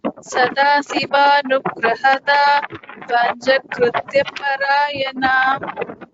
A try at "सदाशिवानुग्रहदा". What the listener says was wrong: Here Sadashi, this is Sha, this is Sa and Sha is different. Sadashivanugrahada.